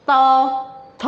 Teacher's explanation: फिर त वर्ग, ये दांत से बोलते हैं